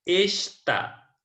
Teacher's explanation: Está, nós temos aí a última sílaba como sendo a sílaba tônica, portanto, está é uma palavra oxítona.